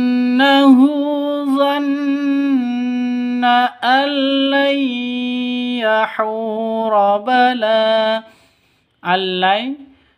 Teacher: Cara bacanya masuk ke lam tanpa dengung. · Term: idgham bila ghunah